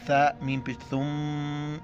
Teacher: ثا کے وقت زبان باہر نکالنا ہے. ثا میم پیش ثم میم زبر ہے.